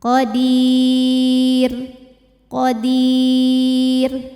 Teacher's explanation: r-nya tipis lagi jadi kita enggak usah negakin lidah